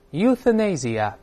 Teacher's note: 这个▁th▁好吐舌，对吧？这个声音在里面